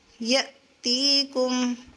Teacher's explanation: تی یہ الف یہ ایک الف کی مقدار پر کھینچی جائے گی، یہ مدہ ہے